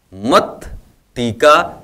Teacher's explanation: त वर्ग के साथ यहाँ पर ट वर्ग आया हुआ है टा, तो यहाँ पर जो यह त है यह ट में परिवर्तन हो गया